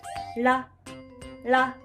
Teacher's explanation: The R equivalent in Japanese is more like a D. It's often described as a tap or a flap because you lightly touch the top of your mouth with your tongue. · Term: flap r